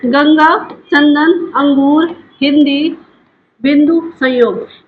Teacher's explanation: इनका उच्चारण करते समय केवल नाक से हवा निकलती है, ठीक है, या नाक से, नाक की सहायता से हम बोलते हैं तो वो क्या हो जाता है, हमारा अनुस्वार कहलाता है।